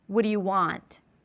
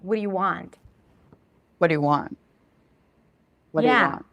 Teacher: you might want to squeeze them in together and to only put the focus on what matters, which is the word want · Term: reduced